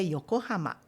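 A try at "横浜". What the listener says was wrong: O senhor falou, não falou yoko yokohamã, mas é yokohama. A vogal é não é ã, é a.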